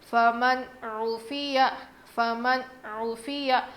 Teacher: فا زبر فا، میم نون زبر من فمن، عین پیش عو فمن عو، فا زیر فی فمن عفی، یا زبر یا فمن عفی، نون ساکن کے بعد حروف حلقی میں سے عین آیا ہے، اسی لیے ہم نون کی آواز کو ظاہر کر کے پڑھیں گے۔ فمن عفی فمن عفی، یہاں کھینچیں گے نہیں، عفیہ ایسے نہیں کھینچنا، جلدی پڑھ لیں گے۔